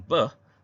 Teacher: bunyi peh dan beh berlaku dalam daerah letupan dua bibir